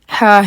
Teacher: اس حرف کا نام اور آواز دونوں کے دونوں ہی ہا ہیں، اور اس کا جو مخرج ہے وہ ہے گلے کے بیچ میں۔